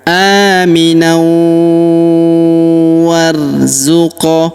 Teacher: Kemudian tanwin an, huruf nan ya, bertemu dengan huruf waw berharokat tasydid, maka tanwin an-nya melebur masuk ke huruf waw yang berharokat tasydid. Kita tahan dan kita tekan serta kita dengungkan 2-3 harokat.